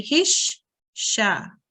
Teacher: And to join them, we need to join the he onto the sh first, the sh sound, and then we make the sound of the mutaharrik part of this letter. In this case, it's a fatha. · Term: shadda letter